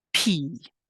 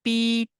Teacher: you will not feel a puff of air or if you do it should be much softer